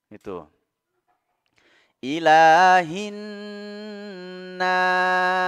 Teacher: ingat huruf sin mengalir ketika disukunkan ya, mengalir as ya.